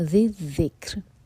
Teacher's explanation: اس کے بعد ذی ذکری، ذیل ہیں دونوں، یہاں پہ زا کا ساؤنڈ بالکل نہ آئے، ذیل کو ذیل سے جوڑیں گے، ذی ذک، آگے ذیل کو کیف سے تو کیف پر حمز اور را کے نیچے کسرہ، تو یہ را باریک، اور آگے یہاں پر رکیں گے تو اس کو ساکن کریں گے تو لائٹ را ہوگا کیونکہ اس سے پہلے ہے کسرہ